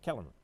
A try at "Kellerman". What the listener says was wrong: Yes, it's like you're skipping a syllable. I hear Kellerman. Kellerman. Kellerman. No, Kellerman.